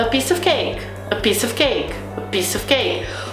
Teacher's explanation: O a e o of, que é um artigo, uma preposição, nessa frasezinha não é pronunciado com força, com estresse. Então por isso que também essas palavrinhas desaparecem, parece que eles estão comendo os sons, e não é o caso.